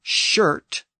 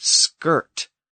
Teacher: English had the word shirt pronounced in the front of the mouth whereas the Vikings had the word skirt pronounced more in the back of the throat